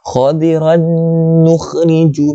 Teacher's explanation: Idgham bi ghunnah. Cara baca dia dengunglah 2 harakat.